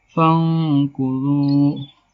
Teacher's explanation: cara membacanya samar-samar di bibir membentuk huruf fa. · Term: ikhfa hakiki